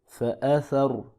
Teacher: را ساکن ہے، اس سے پہلے زبر ہے لہذا پر کر کے پڑھیں گے